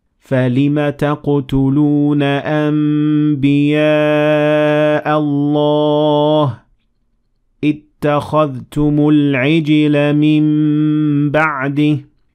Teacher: Iqlab means change, and when ba follows noon sakinah, you should assimilate them into meem with two harakat